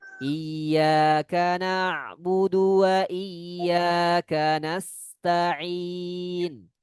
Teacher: sinnya dipanjangkan sedikit ketika mati